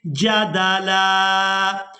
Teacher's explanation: اب یہاں پر بھی آپ لوگ علامات وقف دیکھ رہے ہیں، وقف کریں گے تو وقف کی صورت میں لام پر ایک زبر ادا کریں گے اور اس کو ایک الف مقدار کھینچ کر ادا کریں گے